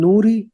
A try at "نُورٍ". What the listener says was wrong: نوری کیوں ہوگا؟ نورن ہوگا نا.